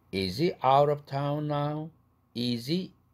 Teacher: H 날아갔으니까 z가 링킹 되죠